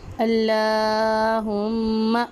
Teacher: اللہم، جی لام پہ کھڑی حرکات کا قاعدہ ہو رہا ہے اور ادھر میم مشدد پہ ہم غنہ کریں گے